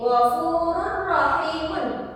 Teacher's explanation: Karena ada tanwin bertemu dengan ro, dan ro ini adalah salah satu huruf idgham bila gunnah, maka dibacanya tidak disertai dengan dengung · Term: idgham bila gunah